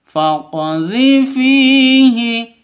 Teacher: fi panjang dua ketukan. Karena ada ya mati diawali dengan kasroh. Mad asli atau mad thobi'i.